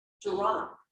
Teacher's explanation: The lips can start moving into the position for the next sound when making the D, like in the consonant cluster, drop. Did you see how my lips were already forming the R when I made the D?